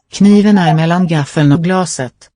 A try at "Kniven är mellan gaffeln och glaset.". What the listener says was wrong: Listen to the quality of the first vowel in the first word. This is one with a very super constricted vowel space. Kniven.